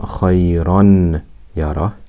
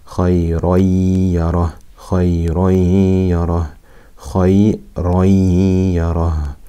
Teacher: We do ghunna, we merge the sukoon into the ya and do ghunna for two harakat.